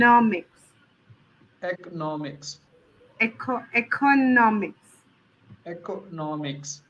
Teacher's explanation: So the stress would be on the no.